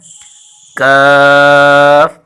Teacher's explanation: ہے قوف کی مخرج سے ذرا نیچے منہ کی جانب، یعنی زبان کی جڑ کے قریب سے اس کے مقابل پر جو سخت تالو ہے اس سے لگے تو وہاں حرف کاف نکلتا ہے